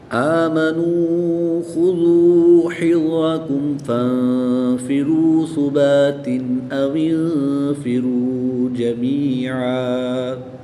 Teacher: میم ساکن کے بعد حرف با اور میم کے علاوہ حرف فا آ رہا ہے تو یہاں پر اظہار شفوی ہوگا، میم ساکن کو خوب ظاہر کر کے پڑھیں گے، غنہ نہیں کریں گے۔ نون ساکن کے بعد فا حروف اخفا میں سے ہے تو یہاں پر اخفا ہوگا، یہاں بھی نون ساکن کے بعد فا حروف اخفا میں سے ہے تو یہاں بھی غنہ زمانی کر کے پڑھیں گے۔